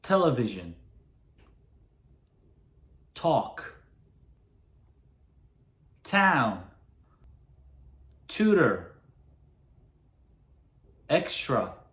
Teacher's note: T를 발음할 때도요. 혀가 이 앞쪽 있죠? 그게 입천장 앞쪽을 닿아요. T. 그렇게 발음을 하시면 되고요.